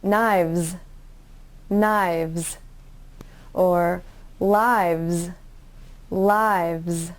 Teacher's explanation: to make the v sound use your top teeth and touch them to the bottom lip and make it a voiced sound then to make the s sound put your tongue behind your